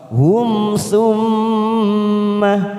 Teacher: mim yang bertasjid namanya bacaan gunah tiga ketuk kita tekan · mim sukun bertemu kita baca jelas tanpa mendengung namanya Idhar syafawi